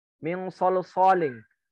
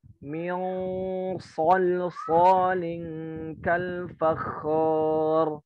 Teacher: Min itu masuk ke dalam banget ya. Diangkat pangkalnya.